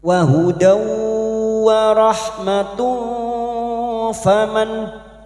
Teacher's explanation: Kita samarkan bunyi dumat tanwin. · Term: ikfa hakiki